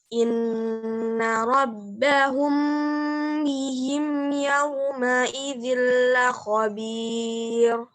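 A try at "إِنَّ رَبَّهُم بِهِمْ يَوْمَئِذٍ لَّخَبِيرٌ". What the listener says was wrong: Coba dilatih, direnggangkan dikit. Nggak langsung ya. Inna rabbahum bihim.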